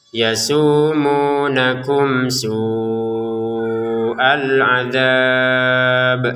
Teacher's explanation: Mim sukun di sini bertemu sin. Kita baca dengan jelas, ya. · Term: dibaca dengan jelas